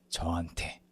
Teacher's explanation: If you somehow keep sounding like 저한테 when you read this portion, try to lower the pitch of your voice a little bit and it'll force the sound to become a little more like 저한테